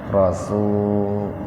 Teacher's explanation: kalau bentuk tunggal dibaca panjang sinnya